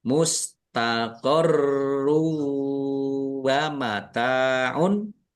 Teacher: Ada tasdidnya ditekan biar tampak dobel. Mustaqoru tanwin bertemu dengan huruf wau. Idgham bighunah masuk dengan mendengung. Yaitu mendengung wau ditandai wunya ada tasdidnya ya.